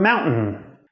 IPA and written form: mawntn̩ (mountain)